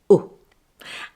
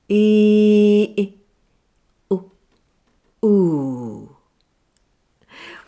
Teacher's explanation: It's a short voiced sound like this, oo, and is known as a central vowel sound, meaning the sound is produced through the movement of your tongue somewhere between the back and the front of it. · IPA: /ʊ/